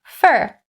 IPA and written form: fər (for)